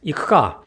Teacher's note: as you can see the u is between two k's two unvoiced consonants thus the u gets to voiced we do not engage our